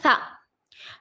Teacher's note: سا، سا زبان کی نوک کو سامنے کے 2 دانتوں کے حصے کو، سامنے کے 2 دانتوں کے کنارے کو لگانے سے سا ادا ہوتا ہے، سا پر زبر ہے نہیں کھینچیں گے، سا کو ہلکا پڑھیں گے، سا زبر سا۔